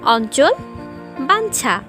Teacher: এরপরে আসছে যুক্ত ইয়, যার সাথে যুক্ত অবস্থায় থাকতে পারে চ, ছ, বর্গীয় জ এবং ঝ। এক্ষেত্রে উচ্চারণ হবে দন্ত নয়ের মতো